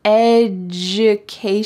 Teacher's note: Notice this pronunciation. The D sounds like J.